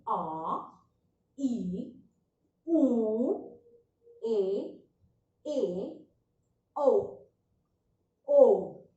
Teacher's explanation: इन स्वरों के उच्चारण करते समय 2 गुना यानी कि ज्यादा लंबा समय लगता है। इनसे ह्रस्व स्वर से 2 गुना ज्यादा समय लगता है। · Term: दीर्घ स्वर